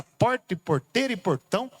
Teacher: o R retroflexo, essa torcida na língua